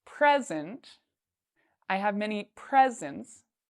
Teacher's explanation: I have here the word present if I put stress or if I say louder and longer the first part present I have many presents then this means like a gift